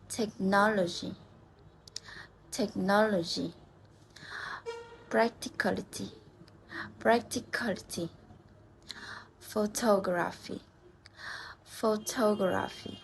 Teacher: So words ending in this. We stress in the third last syllable.